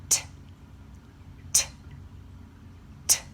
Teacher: There is no pitch, and I'm not making any sound with my actual vocal cords. I'm just pushing air through my teeth. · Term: unvoiced